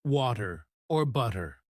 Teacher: the flap T sound, where the T sounds like a soft D, as in water or butter